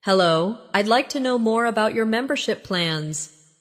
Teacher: Notice the stress on membership, so it's clear what you're asking about.